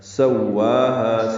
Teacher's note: دو حرکات لمبا ہے، سواہا سین کو واو سے ملانا ہے، وا اور ہا دونوں دو دو حرکات لمبے کریں گے ، ہا اقصی حلق سے ادا کریں گے، حلق کا وہ